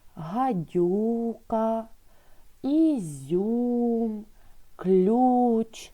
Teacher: в цих словах буковка Ю позначає один звук У і пом'якшує попередній приголосний.